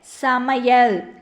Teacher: ஐகாரம் சொல்லின் இடையில் வரும்போது ஒரு மாத்திரை அளவில் ஒலிக்கும்